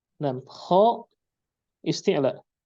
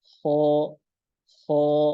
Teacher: kha isti'la. Setelahnya alif, maka alifnya mengikuti huruf sebelumnya. Kha, bukan kha.